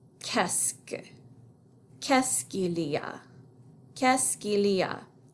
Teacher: This beginning part sometimes stumps people. It kind of sounds like the K sound, then the S sound, and then the K sound.